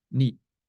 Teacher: So if you look on the other side, you see in 2 English words, need and neat, need and neat. Neat has a T at the end, so you swallow the vowel, and this is called an allophonic clipping